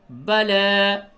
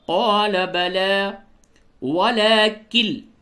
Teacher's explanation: لام کو تھوڑا سا کھینچیے اور یا نہیں پڑھیں گے